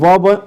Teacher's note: दंत ओष्ठ, ठीक है, जब व बोलते हैं आप, दंत और ओष्ठ दोनों का इस्तेमाल होता है तब व ध्वनि निकलती है